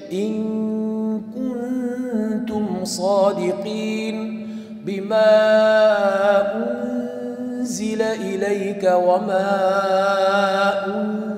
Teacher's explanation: nunni nimaga zani chiqadigan joyga yashirganligim uchun zani hidi kelyapti. Ya'ni zani sifati bor. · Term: ixfo